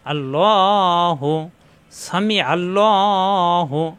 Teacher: কারণ আল্লাহ শব্দের ডানে আসছে জবর। আল্লাহ শব্দের ডানে জবর অথবা পেশ আসলে আল্লাহ শব্দ মোটা হয়, লা না হয় ল হয়, অর্থাৎ পুর। আরবিতে একে পুর বলা হয়, মোটা।